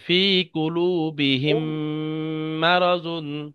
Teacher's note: মিম সাকিনকে মিমের সাথে মিলিয়ে এক আলিফ পরিমাণ গুণনা করে পড়তে হবে। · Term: ঈদগামে সাফাবি